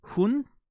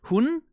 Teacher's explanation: And when you say when you say she, you say hunn, you let the vowel roll, right? Hunn. You make it longer.